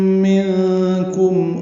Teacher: منکم میں نون ساکن کے بعد کاف آنے کی وجہ سے اخفا ہے، نون کی آواز چھپائیں گے